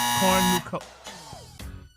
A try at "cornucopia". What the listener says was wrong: You put the accent in the wrong place. Try it again. Now that last one, that was close. Yeah, cornucopia. No. No. Cornucopia.